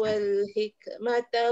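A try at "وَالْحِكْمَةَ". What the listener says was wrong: Dah cantik dah keluar angin tu. Hik. Tapi ada bunyi pula ujung ke. Wal hik. Hik.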